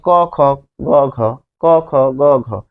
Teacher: বায়ু প্রবাহ অর্থাৎ বাতাস বাতাস বেশি না কম যেমন ক বললে যেরকম বাতাস জোর লাগে খ তার চেয়ে বেশি লাগে